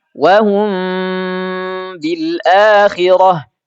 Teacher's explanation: suara mimnya disamarkan dulu. Setelah itu disertai dengan dengung sepanjang dua harakat, dua ketukan · Suara mimnya tuh samar. Enggak lagi dibaca wahum, hum. Kalau hum ini jelas izhar. Tapi ini enggak. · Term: ikhfa syafawi